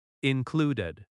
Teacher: Included has stress on clud.